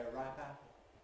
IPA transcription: ə ˈraɪp ˈæpl̩